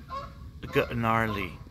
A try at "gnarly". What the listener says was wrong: You don't pronounce a G, asshole.